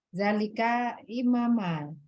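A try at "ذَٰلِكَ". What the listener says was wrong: Umi, coba zalnya makhrajnya naik sedikit, ujung lidahnya keluarkan sedikit. Jangan di bawah. Zalika.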